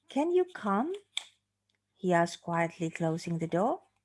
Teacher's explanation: So I hope you can notice the stress, the rising intonation, on the word come and the one on the word door. Yeah, so the word door, the rising there is slightly higher than the one on the preceding word on come.